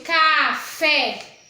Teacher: o café café eu falei com mais intensidade aí o fé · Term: sílaba tônica